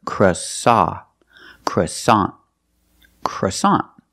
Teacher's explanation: the second syllable is ah like hot and stop